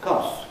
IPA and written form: kɒss (costs)